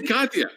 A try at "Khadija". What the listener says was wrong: The J is silent in many languages, so it throws people off. Khadija.